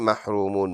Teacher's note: رو محرو میم واو پیش مو محرومون نون زبر ن محرومون اسٹاپ کریں گے تو نون کا زبر سائلنٹ محرومون بن جائے گا